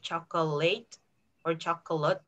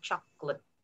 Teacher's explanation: as a native speaker would do it you don't say the o in the middle